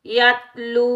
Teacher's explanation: واو مدہ کو ایک الف کی مقدار میں کھینچ کر ادا کریں گے